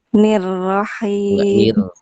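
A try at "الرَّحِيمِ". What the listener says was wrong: Ditebalkan.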